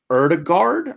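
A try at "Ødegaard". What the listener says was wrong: it's a O, like Odegaard. Or Odegaard. Like you say, like you're saying like UH, like Odegaard, yeah.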